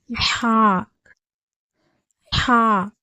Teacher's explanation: ஹாவுடைய பிறப்பிடம் தொண்டையுடைய நடுப்பாகத்திலிருந்து பிறக்கப்படுகிறது